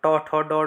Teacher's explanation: ट, ठ, ड, ढ ये मूर्धा से आते हैं।